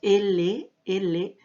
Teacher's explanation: Sentimos que el aire está saliendo por los costados de nuestra lengua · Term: laterales